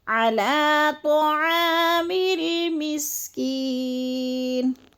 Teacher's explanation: میم کو لام سے ملانا ہے، تو جلدی ادا کرنا ہے